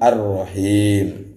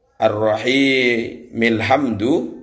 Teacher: Huruf mimnya dibaca sukun, padahal harokatnya mim itu kasroh. Karena dibaca waqaf, maka harus disukunkan Ar-Rahim. Makanya disebut mat arid sukun. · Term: mat arid lisukun